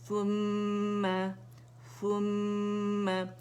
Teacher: ثم ہر غنہ مشدد, اکمل گریڈ کا غنہ, اینڈ یہاں پہ ہمارے پاس سا پہ دمہ ہے, کمپلیٹ رولنگ کریں گے لپس کی.